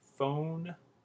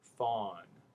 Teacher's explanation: Again, the O vowel, very tight, very tense, rounded lips. The ah vowel, a lot more open, a lot more relaxed.